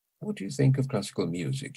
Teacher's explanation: what do you begins with an accent on what think of begins with an accent on think and classical the same class and music music as well what